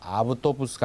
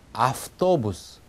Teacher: 그래서 아우토부스가 아니라 아프토부스 이렇게 v를 F 쪽으로 소리를 끌고 간다는 얘기입니다